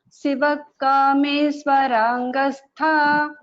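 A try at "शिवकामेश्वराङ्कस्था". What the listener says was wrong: Only one small thing, that ka should be heard clearly. Shiva Kameshwarankastha.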